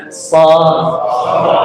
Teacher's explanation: Jadi sod tidak ada hubungannya dengan bibir, tidak ada hubungan dengan pipi, tidak ada. Hubungannya hanya lidah dan gigi saja.